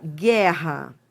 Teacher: realmente você não escuta o som do U. Você escuta o som do G. Então, por exemplo, quando você fala assim, ó, guerra. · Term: dígrafo consonantal